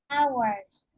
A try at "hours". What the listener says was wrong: Hours, yeah, not hours. Because I heard you told hours. So just hours. You don't need to pronunciate H.